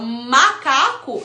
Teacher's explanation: o M, ele é formado pelo contato dos dois lábios